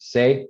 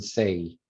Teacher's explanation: you get another little vowel added onto the end of it. Se and say. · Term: off-glide